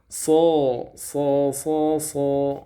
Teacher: ujung lidah berada di ruang antara gigi seri atas dan gigi seri bawah. Jadi nggak nempel ke sana, nggak nempel ke sini.